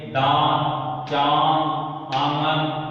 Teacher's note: अनुनासिक, इनका उच्चारण नाक और गले दोनों से होता है।